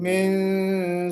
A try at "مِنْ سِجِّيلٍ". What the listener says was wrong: म्यों नहीं होना चाहिए, म्यों कर देंगे तो वो इख्फा मोटा हो जाएगा। मिन सिज्जील, बारीक इख्फा करना है।